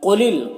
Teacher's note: قاف حروف مستعلیہ میں سے، تو اسے پر پڑھیں گے